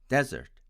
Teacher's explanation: My friends from India tend to pronounce it as desert, with the stress on the first syllable.